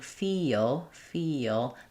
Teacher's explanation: What you hear is that if I'm saying feel feel, there is that little schwa vowel or sometimes more of an uh vowel before the l sound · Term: dark L